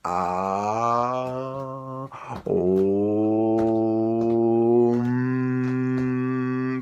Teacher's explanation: On part donc du fond de la gorge, qu'on commence par A, Om, pour finir donc sur les lèvres.